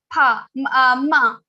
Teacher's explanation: when you are saying ma, you have to touch your lips also, and also your nose is also involved here. So pa, ma. Ma is nasal consonant for these varnas.